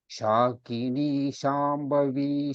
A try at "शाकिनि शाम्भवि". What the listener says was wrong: When you tell the Hrasvasvaras, please pronounce it as Hrasva. When it is Dirgha, it is to be pronounced as Dirgha. For example, it is not Shakini Shambhavi. It is Sha. Similarly, it is Shakini Shambhavi. The Na and Va, Ni and Vi are Hrasva, short vowels.